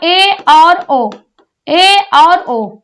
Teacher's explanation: क्या कहता है, अर्ध संवृत। अर्ध संवृत किसे कहते हैं, मुख द्वार आधा बंद, मुख द्वार आधा बंद।